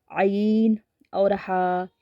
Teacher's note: आईन और हा यह हलक के दरमियान वाले हिस्से से अदा होते हैं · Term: हरूफ हल्क